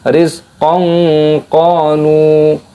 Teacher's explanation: Ada fathah tanwin bertemu dengan huruf qaf adalah ikhfa disamarkan